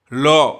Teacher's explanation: ल में भी क्या होता है, हल्का सा सटता है तालु में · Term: अंतस्थ व्यंजन